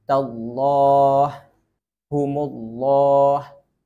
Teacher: Ketika lam masuk ke lafzul jalalah, yaitu lafaz Allah yang mana sebelumnya itu huruf fathah dommah. Dalam kondisi ini baru huruf lam dibaca tebal.